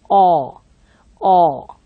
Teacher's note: So, this aw is more rounded. When I utter this, you can look at my lips, it's more rounded.